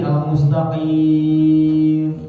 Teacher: Sebab mim itu maknanya dari 2 bibir. Yang namanya huruf sukun itu harus balik kepada makhrajnya. Berarti bibirnya mingkem.